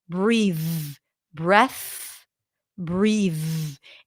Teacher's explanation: It's like the difference between S and Z, F and V, F and V. This is a voice TH, and it's the voice pair of the voiceless TH.